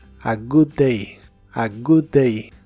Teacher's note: la doble o de good se pronuncia con una u corta y explosiva